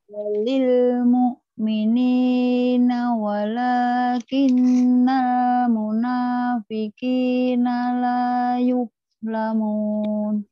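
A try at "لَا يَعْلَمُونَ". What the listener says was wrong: Bukan yuk. Laya. Ulang lagi.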